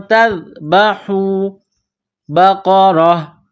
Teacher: قاف کو موٹا کرنا ہے، را کے اوپر زبر ہے، را کو موٹا کرنا ہے